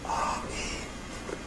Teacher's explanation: But that means that the voiceless segments remain voiceless, vocal folds wide open, but what would otherwise be voiced segments, like vowels and things, have the vocal folds narrowed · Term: whisper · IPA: [ɑ̥, i̥]